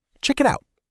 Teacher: The consonant sounds link right into the vowel sounds. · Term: linked sound blocks